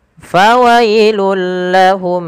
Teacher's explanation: suara tanwin yang langsung dimasukkan ke huruf lam karena ia idgham bila gunnah.